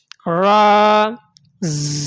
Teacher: را کو پور کر کے پڑھیں گے، موٹا کر کے پڑھیں گے